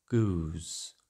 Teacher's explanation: closing vowel in Goose breaks into a closing diphthong ending with a Glide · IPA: ʉw